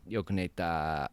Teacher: And it has this long line, which means he's saying yoku neta. But the small tsu here is an abrupt ending. So he says yoku neta, and then he just stops